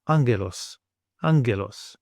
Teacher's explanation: And then we want an NG sound as in the word singer.